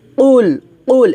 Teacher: কফটা আমাদেরকে মোটা করে উচ্চারণ করতে হবে